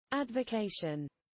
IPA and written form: ˌædvəˈkeɪʃən (advocation)